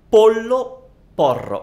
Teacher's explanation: For English speakers, L is similar to the English L, and the problem is usually the R, because English R comes from here, it's like road, and Italian R comes from here. It's almost like R and L are similar, so Italian R is frontal